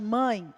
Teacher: o ditongo nasal precisamos também das fossas nasais para que o som saia perfeito